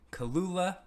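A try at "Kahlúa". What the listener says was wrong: no no kahlua kahlua there's there's no second l there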